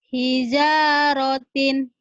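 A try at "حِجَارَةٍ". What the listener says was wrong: Jimnya kurang tebal ya, kurang keras.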